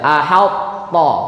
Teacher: Jadi diidghamkan cuman hanya menghilangkan sifat qalqalah. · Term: idgham naqis